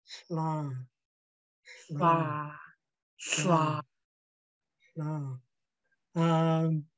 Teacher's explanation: We have to use a Haida mouth. And so we put the tip of our tongue behind our front teeth and keeping our lips at a slant. And you'll feel the air blowing out on the sides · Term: HL